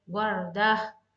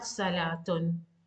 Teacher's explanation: Whenever you need to just stop on this noun, you need to stop on ha sound